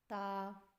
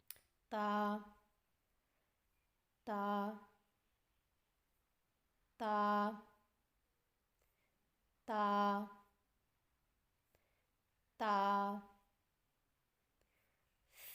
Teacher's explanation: تا کی ادائیگی میں زبان کی نوک کو سامنے والے اوپر کے دو دانتوں کے جڑ سے لگا کر باریک آواز میں پڑھیں